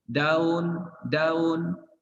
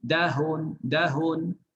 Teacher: Kalau hampir-hampir macam ha, itu yang dikatakan tashil. Kalau dah betul-betul jadi ha, itu dah bukan tashil lagi. Itu dah tukar jadi ha.